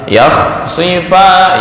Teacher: Makhrajnya di tenggorokan bagian atas.